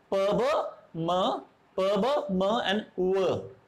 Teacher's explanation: टू lips are articulator, lower lip is the active articulator एंड upper lip is the passive articulator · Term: बाइलेबियल साउंड्स